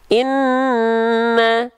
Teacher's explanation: Inna, nah berarti huruf nun fathah adalah huruf yang tipis.